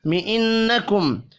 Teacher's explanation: نون مشدد پر غنہ کریں گے. میم ساکن کے بعد وا ہے، اظہار شفی ہوگا، غنہ نہیں ہوگا.